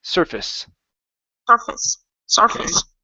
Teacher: accent at the beginning you guys and instead of saying face that turns to a fist surface